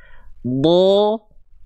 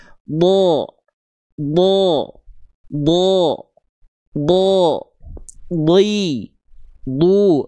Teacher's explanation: Pangkal lidah kita naik. Pangkal lidah kita bukan turun ke bawah tapi naik ke atas sehingga suaranya tebal.